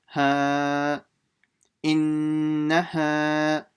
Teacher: the alif and the nun is very quick, just the ha is long because of the alif.